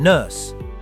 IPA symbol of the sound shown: n